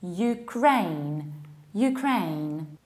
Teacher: you stress the second syllable